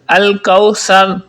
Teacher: کاف ہے یہ کش والا ہے، اس کو آپ باریک پڑھیں گے، موٹا نہیں کریں گے